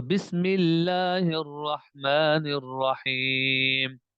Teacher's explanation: یہاں پر دیکھیں کہ لفظ اللہ کا لام کیا ہے؟ باریک ہے